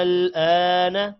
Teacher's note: آپ نے غور سے پڑھنا ہے حمزہ لام مد کھڑی زبر پہلے الف پر مد ہے 5 الف کے برابر الف کو لمبا کرنا ہے پھر آخر میں ہلکی سی لام کے ساتھ آواز ملانی ہے